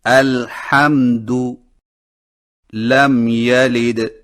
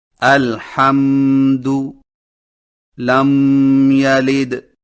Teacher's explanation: ہونٹوں کے خشک حصوں کو مضبوطی سے بند کر کے میم کو نہایت صاف اور واضح کر کے بغیر غنہ کے پڑھیں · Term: اظہار شفوی